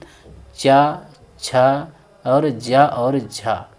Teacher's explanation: ये स्पर्श भी करती हैं और संघर्ष भी करती हैं। इसीलिए इनको स्पर्श और संघर्षी भी कहा जाता है। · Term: स्पर्श संघर्षी